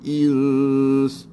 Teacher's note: dengung dan hujungnya bunyikan sin